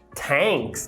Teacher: Thanks, que além de ser informal, ele não fala o TH desvozeado. Thanks, ele reduz para um thanks, que é bem comum.